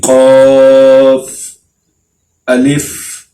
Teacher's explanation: قاف، موٹا قاف، اس کو کیسے پڑھنا ہے؟ زبان کی جڑ کو تالو کے ساتھ لگا کے اس کو ہم پڑھیں گے